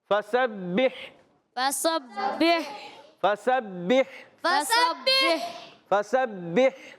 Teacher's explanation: फ़ा का मखरज वही ऊपर के दांतों के किनारे जब नीचे वाले होंठ के तर हिस्से से लगेंगे तो अदा होता है फ़ा